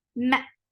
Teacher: Meme should be from your lips, very nicely done, and attached with hamza. Hamza will cut off the sound very sharply.